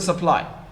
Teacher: the u has become a schwa, like the last sound in sofa or the first in around. And so the stressed syllable, the vowel in the stressed syllable is pronounced clearly, unlike the other vowels.